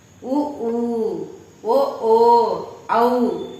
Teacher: வாய் திறக்கும் முயற்சியுடன் இதழ்களை குவிப்பதால் உருவாகிறது